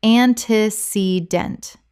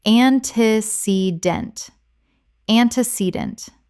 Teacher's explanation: 4 syllables with the stress on the third.